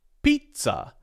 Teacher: This word has two syllables. The primary stress is on the first syllable, P. The second syllable, T, is unstressed.